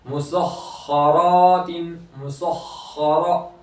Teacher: खा की आवाज जारी रहती है, जारी रखेंगे · खा हुर्फ मुस्तालिया में से है तो उसको पूर भी करेंगे और रा को पूर करेंगे, रा के ऊपर जबर है, एक